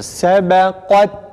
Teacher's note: uzatmadan, kesinlikle uzatmadan A sesiyle kafta istila sıfatı var değil mi? Kalın harftir. A sesiyle okuyoruz.